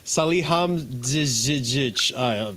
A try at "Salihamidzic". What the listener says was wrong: What did you do with the D?